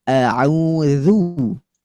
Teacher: Hamzahnya dibaca istifal atau tipis.